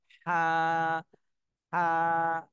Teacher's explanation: বের করে বাতাস বের করে আই এইভাবে উচ্চারণ করতে হবে তাহলে এটার উচ্চারণ করার স্থান হলো কণ্ঠনালীর মধ্যখান থেকে অর্থাৎ হলকের মধ্যখান এখান থেকে হা উচ্চারণ হবে হা চাপ দিয়ে বাতাস বের করতে হবে হা আপনারা সবাই এটা